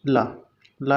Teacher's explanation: ला को उच्चारण करेंगे तो जीवा का अगला भाग मसूड़े पे टच होगा। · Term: पार्श्विक व्यंजन